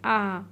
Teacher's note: হামজার উপরে খারা জবর আছে এক আলিফ টান হবে